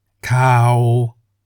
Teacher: for example cow meaning news is in the low tone cow cow in the low tone is lower than cow which is in the middle tone · In the low tone, the pitch of your voice is lower than the middle tone.